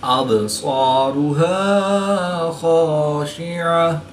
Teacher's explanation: बा साकिन है, तो यहाँ पर क़लक़ला सुग़रा करके पढ़ेंगे।